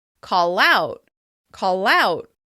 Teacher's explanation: In the phrasal verb call out, you can hear that the l sound at the end of the first word connects to the vowel sound at the beginning of the next word. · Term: catenation